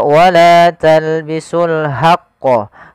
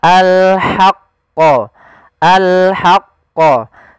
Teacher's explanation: Jangan dibaca wala talbisul haqqo, tapi dia ha posisinya adalah kita bagaimana menyempurnakan huruf ha kecil, yaitu kita mengeluarkan dari tengah tenggorokan kita ha disertai dengan adanya nafas. Maka al-haqqo, al-haqqo.